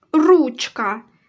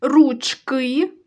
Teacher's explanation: ручка наголошений перший склад ручки наголошений другий склад